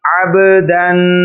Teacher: عین کے بعد با ساکن ہے، حروف قلقلہ میں سے ہے، اس لیے اس کو بھی ظاہر کر کے پڑھا جا رہا ہے۔